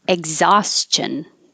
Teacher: you don't really say the k or the g if i said x or egg you can't tell because i'm